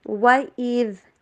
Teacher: آواز کو ہلانا بھی نہیں ہے، اور از زا والی آواز بھی نہیں آنی چاہیے، بلکہ آواز ہونی چاہیے دال. وَإِذ ٹھیک ہے.